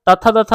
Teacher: तथ दथ दंत से बोला जाता है